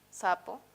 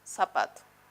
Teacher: yo voy a decir sapo con sa, sapo, y voy a decir zapato con el mismo sonido, zapato. Y no voy a decir zapato, porque yo prefiero pronunciar sa, por eso es el ceseo.